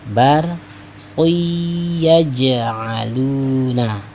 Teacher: jangan barqun, tapi dobelkan, tasydidkan ya, tanwinnya dileburkan ya, sehingga dibacanya barqiyaj'aluna. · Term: idgham bi khunnah